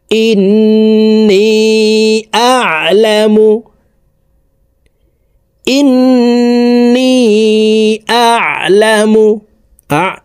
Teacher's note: আইনকে হলুকের মধ্যখান থেকে চাপ দিয়ে উচ্চারণ করতে হবে কারণ আইনের মাখরাজ হলুকের মধ্যখান থেকে হবে ইন্নিবাস সামাওয়াতি সামাওয়াতি ওয়াল